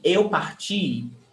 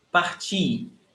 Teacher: the stressed syllable is ti, is the last one